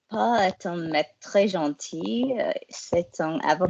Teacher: can we hear that we're going into vocal fry?